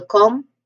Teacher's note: the first syllable com there's a schwa sound here. So, it's quick and fast. It's unstressed basically.